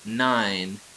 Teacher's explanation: An alveolar nasal is found in the word nine